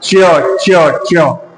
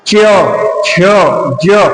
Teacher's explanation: अच्छा अब देखो उसके बाद च वर्ग, च च च, इसमें देखो आप च छ ज, मतलब मुंह से बोल के देखो, जो आपकी जीभ है वो ऊपर टकरा रही है किससे, तालू से।